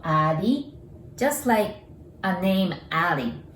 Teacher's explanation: We don't have R sound in Japanese, so R becomes L sound.